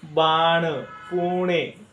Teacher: हा जो आपला न आहे याच्या उच्चारामध्ये थोडीशी ड ची छटा असते